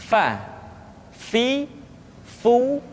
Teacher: diucapkan dengan menyentuhkan ujung dua gigi seri kita bagian atas dengan bibir bawah bagian dalam seperti kita mengucapkan huruf F di dalam huruf latin Fa fi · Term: huruf FA